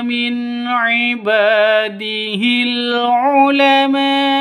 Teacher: Min ibadihil non mati bertemu dengan ain, jelas terang karena bacaan izhar halki, jelas, tidak boleh disentak, tidak boleh didengungkan. Min ibad itu salah.